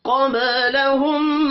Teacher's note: قبلہم، قبلہم قاف حروف مستعلیہ ہے، پر پڑھا جائے گا. با ساکن پر قلقلہ کریں گے. ہم میم مشدد پر غنہ کرنا ہے.